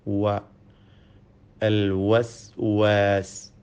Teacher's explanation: വാവിൻ്റെ മഖ്റജ്, ഉത്ഭവസ്ഥാനം 2 ചുണ്ടുകളാണ്. വാവ് ഉച്ചരിക്കുമ്പോൾ ചുണ്ടുകൾ വൃത്താകൃതിയിലാവുന്നു എന്നത് ശ്രദ്ധേയമാണ്.